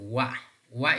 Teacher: the two lips come close but they're not touching · Wa is also a kind of bilabial sound, right? But wa, which is a semi-vowel, is voiced labial velar.